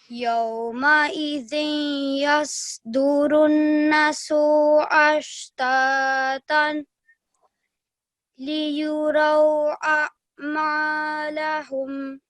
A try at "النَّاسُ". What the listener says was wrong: Now over here, you just did not elongate the na sound out for 2 seconds because this is an alif madda. So we need to elongate the sound. Runnasu. And over here, just try and join these two letters together, because over here you can see this little lam. It means that you should not take a pause and carry on, okay?